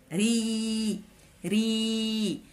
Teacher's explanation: هنا حرف الياء هو عاوننا اننا نمددو الصوت ديال حرف الراء، ري، ري. اذا حرف الياء هنايا هو فقط حركة طويلة، حركة طويلة، ري.